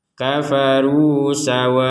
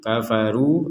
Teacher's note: Kata kafaru di sini ada dhammah bertemu wawu. Di atasnya ada sukun, maka ini dibaca dua harokat